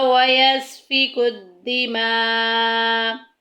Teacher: اوپر مد بھی ہے، اس کو 2.5 الف کے برابر 3 الف کے برابر لمبا کریں گے